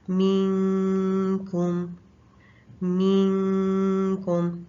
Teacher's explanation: کاف جو ہے باریک لیٹر ہے اور اس میں بھی اقصی لسان اوپر سخت تالو پہ لگتی ہے. یہاں پر اس میں بھی زبان کی نوک کا کوئی کام نہیں ہے، تو زبان کی نوک نیچے والے دانتوں کے ساتھ لگی ہوگی اور ہم کاف کے مخرج کے ساتھ زبان کو لگا دیں گے اور پھر ہم غنہ کریں گے 2 کاؤنٹس. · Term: اخفا